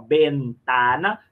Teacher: Olha o esforço para não nasalizar a letra E nem a letra A.